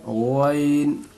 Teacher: वाइन को मोटी करके बोले हल्क से